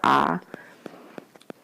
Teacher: it's pronounced in your pharynx in your throat and that's why they call it a pharyngeal